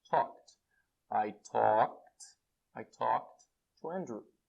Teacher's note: Não tem vibração, então fica talked